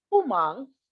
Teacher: pu is the fourth tone, falling tone, and mang is the high rising pitch.